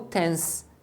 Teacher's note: é comum palavras que tem o final NTS que eles omitam o t então barracas você vai ouvir como tens então poderia ser intenso